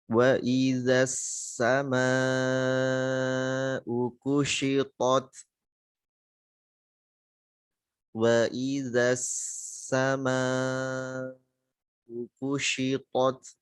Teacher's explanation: Waw tipis, hamzahnya jelaskan, zalnya di ujung lidah keluar. Kemudian langsung masuk ke sin.